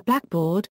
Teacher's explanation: a black board, adjective plus noun, is any board that is black, and has equal stress on both elements